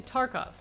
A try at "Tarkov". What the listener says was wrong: You gotta roll the R's. Tarkov.